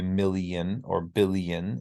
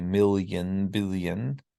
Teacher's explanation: if you say million or billion, it's an E sound. But if you say million, billion, it is a Y.